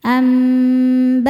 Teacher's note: Karena nun sukun ketemu ba, maka nun sukun diganti bunyi mim sukun ya, kemudian dengungkan. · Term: iqlab